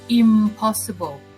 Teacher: But it's a little bit difficult to say impossible, so the sound n is changed to be bilabial m